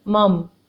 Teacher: میم زبر میم ساکن مم، میم کے اوپر زبر ہے، 1 حرکت پڑھیں گے فوراً میم ساکن کے ساتھ ملا کر